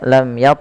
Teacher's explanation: dibaca dengan jelas suara mimnya tanpa ada penahanan dari bunyi mimnya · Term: izhar syafawi